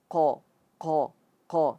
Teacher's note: jangan sampai keluar ee keluar hembusan nafas di situ atau mengalir